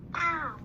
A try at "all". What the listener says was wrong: All. It's not owl, it's all. The A is tricky.